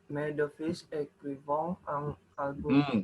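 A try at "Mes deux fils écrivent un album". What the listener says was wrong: Jangan écrivant. Ingat, ENT tidak dibaca ya. Ya, ini yang harus diperhatikan ya. ENT tidak dibaca ya. Dia menjadi dibaca akhirannya yang v di sini. Mais de fils écrivent un album.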